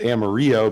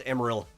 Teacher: you don't even say the O really